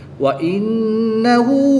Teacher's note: نون مشدد میں ہمیشہ غنہ ہوتا ہے، غنہ کر کے پڑھیں گے